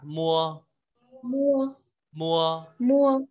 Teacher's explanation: Thì thứ nhất ta có âm môi môi, tức là ta sử dụng môi trên kết hợp với môi dưới